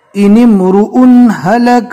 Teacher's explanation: نون کو ڈائریکٹ میم سے ملانا ہے